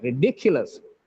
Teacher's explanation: The dick is stressed here.